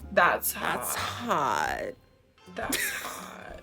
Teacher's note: With the vocal fry, she goes, that's hot.